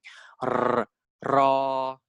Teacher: the R sound in Thai is a rolling R, it's a rhotic R